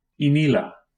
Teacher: It is a high, unrounded front vowel, like the E in meat.